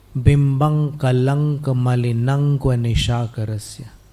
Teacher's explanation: ये अनुप्रास अलंकार होने के कारण अनुस्वार का उच्चारण यहाँ पर म न करते हुए अंक अंक जैसे ही कर चलता रहेगा